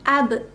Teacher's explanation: Karena ada huruf qalqalah yaitu ba di posisi di tengah ayat, sehingga qalqalah sugro dibacanya itu dipantulkan secara ringan